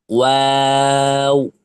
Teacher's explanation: চার আলিফ টান দিয়ে উচ্চারণ করতে হবে ওয়াও অর্থাৎ যখন ওয়া বলবেন তখন ওই সময়টাতে আপনার ঠোটটায় গোল থাকবে।